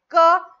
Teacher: क म्हटल्यानंतर जीभ कुठेही चिटकत नाही घशातून आवाज येते